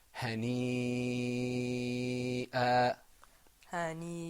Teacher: we're not lengthening the alif, like in ma. We're lengthening the ya.